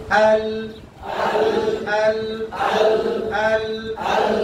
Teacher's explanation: তো লাম আদায় করেন 8 দাঁত বরাবর তার লামের মাখরাজ বলবেন জিহ্বার আগার কিনারা সামনের উপরের 8 দাঁত বরাবর তালুর সঙ্গে লাগিয়ে দিলাম